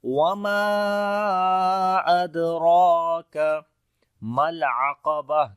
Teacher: مد جائز بولتے ہیں، 3 سے 4 سیکنڈ لمبا کرتے ہیں، دال کے اوپر قلقلہ کریں گے، کمزور قلقلہ ہوگا ، را کو موٹا پڑھیں گے، کھڑی زبر ہے اس کے